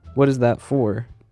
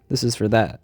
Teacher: in the first sentence four is said with a long o compared to the second sentence where it's pronounced as fur in the first sentence the strong form of for was used